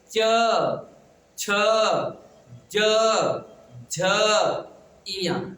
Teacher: जब हम पढ़ते हैं ना तो हमारी जीभ ऊपर वाले तलवे को स्पर्श करती है। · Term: तालव्य